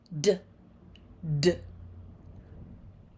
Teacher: D is voiced. The vocal cords are on and less air is pushed out.